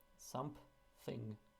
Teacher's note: something you can insert a p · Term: p insertions